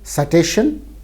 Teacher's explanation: in Hindi, when English words with initial consonant clusters are borrowed, they had to undergo a declusterization